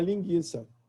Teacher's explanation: tem gente que simplesmente jogam a semivogal fora